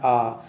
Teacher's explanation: इसके बाद है विवृत स्वर। विवृत में आ, इसके उच्चारण में मुख सबसे अधिक खुलता है, सबसे ज़्यादा खुलता है।